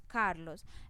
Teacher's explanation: la mayor fuerza de voz está en la sílaba car